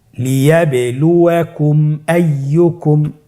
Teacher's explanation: মিম সাকিনের পরে যদি মিম এবং বা ছাড়া বাকি যতগুলো হরফ আছে আরবি সবগুলো হরফের যে কোনো একটি হরফ আসলে মিম সাকিনকে গুণনা ছাড়া স্পষ্ট করে পড়তে হবে। মিম সাকিনকে স্পষ্ট করে গুণনা ছাড়া পড়তে হবে। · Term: ইজহারে শাফাউই